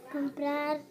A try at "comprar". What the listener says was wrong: There's that R sound again. It's that R sound, remember? R. A-R. So can you sit that A right in there? So we need to work on A-R a little bit more, okay?